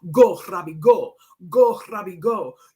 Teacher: I loved the way he said it and I loved the way he trilled his R's.